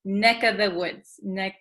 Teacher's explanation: So also when we say neck of the woods, usually this of, the V sound kind of disappears because V's are hard to pronounce. So we tend to say neck of the woods, neck, this of becomes just the vowel sound, neck of the woods, neck of the woods.